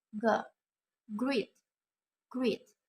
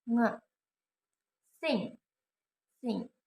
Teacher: These consonant sounds are made when the back part of the tongue touch the soft palate or velum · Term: velar sounds